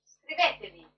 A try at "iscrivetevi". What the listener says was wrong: Iscrivetevi con la i davanti. Iscrivetevi.